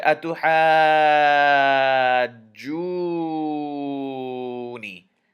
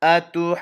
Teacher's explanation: Notice I held the noon in my nose a little bit. That's called gunna. · we have to do gunna on this noon shadda. We have to hold it in our nose a little bit.